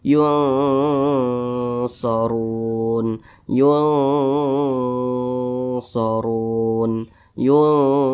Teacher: Jadi cara bacanya itu disamarkan dan juga didengungkan. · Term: ikhfa